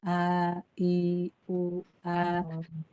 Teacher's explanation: Misalnya hamzah. Hamzah keluar dari pangkal tenggorokan. A, I, U, A.